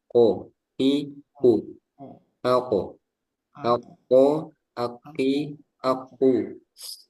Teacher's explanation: untuk kof juga nggak ada udara